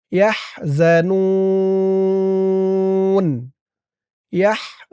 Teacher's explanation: ওয়াকফ করার কারণে ৩ আলিফ টান